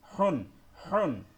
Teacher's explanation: গলার ভিতর থেকে মধ্যভাগ থেকে হা উচ্চারণ হয়